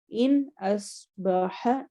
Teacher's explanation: ان میں نون کی آواز واضح رہے گی